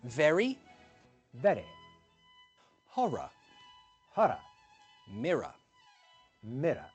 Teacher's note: very lightly taps the front roof of your mouth to create that R sound